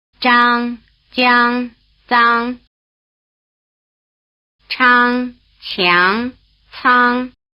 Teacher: they start with the tongue touching the roof of the mouth and continue with the tongue close to the roof of the mouth so that there's an explosion with a lot of friction just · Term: affricate consonants